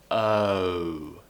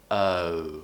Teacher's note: Your mouth gets smaller and rounder as you go.